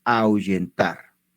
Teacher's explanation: Y que entre la vocal A y la vocal U hay un diptongo decreciente